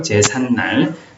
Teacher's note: 제사는 한자어고 날은 고유어니까 일단 대상이 되고요. 그 다음에 제삿날에서 일어나는 현상, 사이소리 현상이 있나요? 네, 니은이 첨가되죠. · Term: 니은 첨가